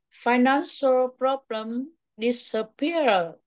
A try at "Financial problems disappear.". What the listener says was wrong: Rồi, chỉ thiếu có một chút xíu thôi là chữ S này thôi nè.